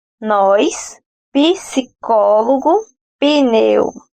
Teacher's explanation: >> Sim, um exemplo bastante comum ocorre em palavra como nós, psicólogo e pneu. Quando pronunciadas por nós brasileiros, é possível perceber o som de uma nova sílaba na pronúncia. Nessas palavras passam a ser ditas com uma vogal i. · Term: epêntese silábica